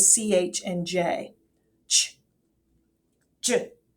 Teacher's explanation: these are sounds that stop air before releasing the sound